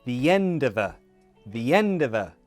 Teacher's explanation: And of course of becomes a schwa.